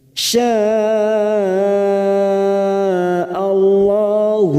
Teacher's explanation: Mad yang bertemu dengan Hamzah dalam satu kalimat mad wajib muttasil empat harakat kita panjangkan